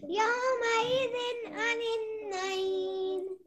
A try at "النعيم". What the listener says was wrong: آخر میں میم ہے نون نہیں ہے.